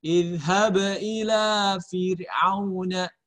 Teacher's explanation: Ba-nya berharokat sukun. Dia qalqalah. Qalqalahnya qalqalah sugro. Kecil ya. Pantulannya tidak besar.